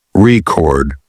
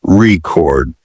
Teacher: the word record is stressed on the first syllable as a noun record but on the second as a verb record